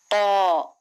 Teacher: जबान की नोक को ऊपर के दांतों की जड़ को लगाने से त निकलता है और मोटी आवाज होनी चाहिए।